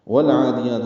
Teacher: واو کو لام سے ملانا ہے، ہونٹوں کی ناتمام گلائی سے ادا کرتے ہوئے۔ لام ساکن پہ اظہار قمری ہے کیونکہ آگے عین حروف قمری میں سے ہے، عین حروف حلقی سے میں سے بھی ہے۔